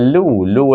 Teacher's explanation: dibaca panjang lebih daripada dua harakat iaitu kita kena membacanya sama ada empat atau lima harakat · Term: Mad Jaiz munfasil